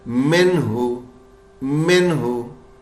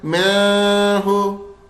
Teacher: نون کو بالکل صاف پڑھنا ہے اور غنہ نہیں ہوگا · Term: اظہار